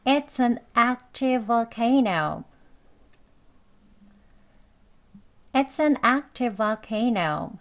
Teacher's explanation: 또 v로 시작했으니까 연결해서 v 소리 하나로 이어서 하면 되겠습니다